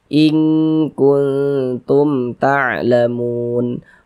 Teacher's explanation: Waw sukun sebelumnya harokat dhammah, maka huruf yang memiliki harokat dhammah ini dibaca panjang, sehingga mu dibaca panjang. Kemudian mad tabi'inya tuh bertemu dengan ini, dengan huruf yang kita sukunkan, berubah nama menjadi mad arid li sukun.